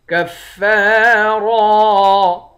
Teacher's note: کاف کو فا کے ساتھ ملا کر فا کو سختی کے ساتھ جمع کر پڑھیں گے۔ فا کے بعد الف ہے، الف حروف مدہ ہے، ایک الف کے مقدار کھینچ کر پڑھیں گے۔